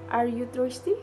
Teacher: the voice rise at the end of a sentence this is common in yes no question or in expressing surprise